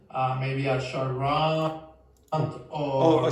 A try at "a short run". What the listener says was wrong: Listen to when he pronounces a short run. Runt, a short runt. Runt does exist in English, but he's just exaggerating the last part and it's the wrong word.